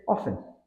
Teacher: while some Learners pronounce the T in often in Modern English it's usually silent